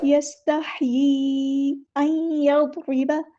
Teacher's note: نون ساکن کے بعد یا ہے تو ادغام مع الغنہ ہو رہا ہے، یعنی ادغام ناقص ہو رہا ہے۔